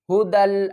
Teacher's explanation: دال کو لام سے ملائیں گے، دال لام دو زبر دل، دیکھیں یا کو ہم نہیں پڑھیں گے